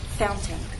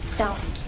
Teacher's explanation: When I say the word fountain, I'm using a glottal stop.